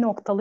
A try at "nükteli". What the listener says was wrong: Noktalı mı olur, nükteli mi olur? Yani nükteli. Nokta olsaydı kafla olurdu.